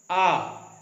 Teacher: वो विवृत मतलब ओपन, पूरा मुंह खोल के आ का उच्चारण किया जाता है, बड़ा आ।